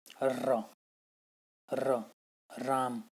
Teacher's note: ठीक है, तो र को जो है प्रकंपी व लुंठित व्यंजन भी, क्योंकि र के उच्चारण में जो हमारी जीभ है वो क्या है, लुढ़कती हुई निकल बाहर आती है और कांपती हुई बाहर आती है, तो उसको इसलिए प्रकंपी भी बोलते हैं।